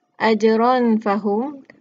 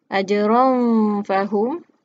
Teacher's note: maka ron itu dia bunyinya disembunyikan dan dia bunyinya itu bersedia untuk menyebut huruf selepasnya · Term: dibaca dengung